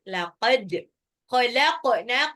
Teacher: dalnya ini pantul, dipantulkan karena dia sukun. Laqad khalaqna, qafnya juga pantul.